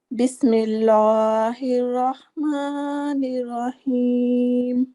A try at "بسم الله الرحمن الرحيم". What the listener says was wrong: یہ لام جو ہے نا بسم اللہ میں ابھی آپ کو بتایا تھا کہ وہ لام موٹا نہیں ہوتا، بھاری نہیں ہوتا.